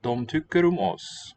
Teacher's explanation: in dom, the M is pronounced but not written.